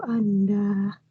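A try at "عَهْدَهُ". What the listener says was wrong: Ahdahu, bukan anda nak, bukan nun situ, ahdahu. Bukan amdana, bukan mim, bukan amdahu, ahdahu.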